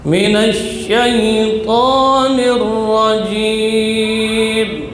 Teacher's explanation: Ta huruf syiddah dan jahar. ujung lidah di usul tsanaya al-ulya, pangkal gigi seri atas.